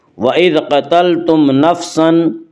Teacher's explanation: اس کا قاعدہ یہ ہے کہ میم ساکن کے بعد میم اور با کے علاوہ کوئی اور حرف آئے تو وہاں پہ اظہار شفوی ہوگا، یعنی میم کو ظاہر کر کے پڑھیں گے